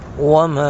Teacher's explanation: ما پر مد منفصل، دو الف کھینچیں گے